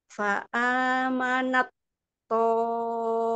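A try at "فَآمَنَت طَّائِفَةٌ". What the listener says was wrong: Ibu belum dapat itbaknya. Ta yang sukunnya ini langsung masuk ke huruf to. Jadi dia seperti terbaca.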